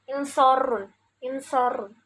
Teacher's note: Yungsorun yang dibaca ro tafhim yaitu ro-nya ini, ro-nya karena berharokat domah, jadi dibacanya tebal, dibaca getaran ro-nya ini tebal.